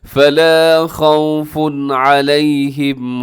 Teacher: پیش والی تنوین، اور آگے علیہم کے شروع میں عین ہے، تنوین کے بعد حروف حلقی آ گیا ہے، یہاں تیزی سے پڑھیے گا، غنہ نہیں کرنا